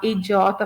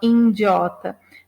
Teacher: então há um processo de nasalização